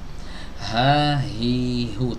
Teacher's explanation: Nah, ini huruf H keluar dari tenggorokan bawah